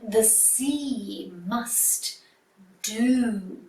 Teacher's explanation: at the end of the line, you've got some long vowel sounds. E in see and oo in do. So make your sound stretch out a little bit longer at the end of the line.